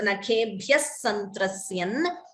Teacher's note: note the Dvitvam, Santrasyan. Extra S is being heard.